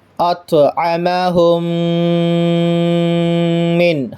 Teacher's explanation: تو دیکھیے ہم کو یہاں پر ملتی ہے ادغام شفوی کی مثال، اطعمہم من، ہم قاعدہ پڑھ کر کے آئے ہیں میم ساکن کے بعد میم آئے، تو یہاں میم ساکن کے بعد میم ہے، تو میم ساکن کے بعد میم ہے تو میم کو میم سے ملا کر پڑھیں گے، اس کو ادغام شفوی کہتے ہیں۔